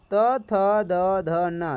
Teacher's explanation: त थ द ध न ये दांतों से स्पर्श कर रहा है। देख लो, जीभ जो है दांतों से स्पर्श कर रहा है